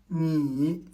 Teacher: le ne est une nasale alvéolaire. La pointe de la langue se gole contre les alvéoles.